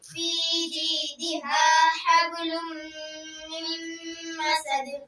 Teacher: ہا نہیں ہے، ہا حلق سے ادا ہوگا